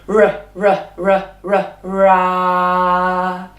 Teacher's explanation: It's at the back of the mouth, using the back of the tongue.